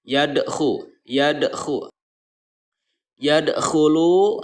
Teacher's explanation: Jadi cara membacanya, huruf qalqalahnya itu dipantulkan dengan ringan dan menyambungkan dengan bacaan setelahnya. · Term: qalqalah sugro